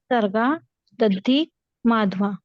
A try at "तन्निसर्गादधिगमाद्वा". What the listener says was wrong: दधिग ग है